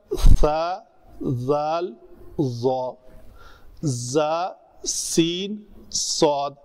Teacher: دونوں دانتوں کے پیچھے آ کے زبان ٹکرا رہی ہے